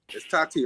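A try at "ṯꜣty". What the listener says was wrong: Cha, yeah, that's better. Chati, because yeah, the first T is actually a TCH, huh?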